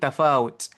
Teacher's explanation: ta ada huruf hams, ada bunyi bisikan sedikit